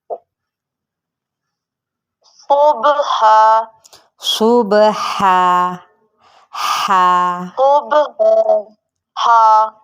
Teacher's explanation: ہا باریک پڑھیں گے وسط حلق سے